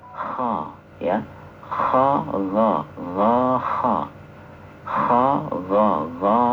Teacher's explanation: Kho itu persis setelah Q setelah pangkal pangkal lidah